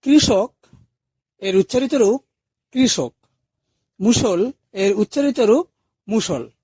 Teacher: মূর্ধন্য স এর উচ্চারণ আমাদের গলায় তালব স এর মত হয় আসলে মূর্ধন্য স এর কোন উচ্চারণ হয় না যেমন কৃষক এর